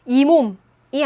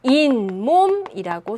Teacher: 발음해보면 이몸이 아니라 인몸이라고 소리가 나네요. 역시나 앞에 없던 니은 소리가 첨가가 됐습니다